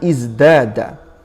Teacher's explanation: tahawwala sautut ta al-mahmus, ya, fi kalimah izdada ila sautid dal al-majhur, menjadi izdada. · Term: al-mumatsalah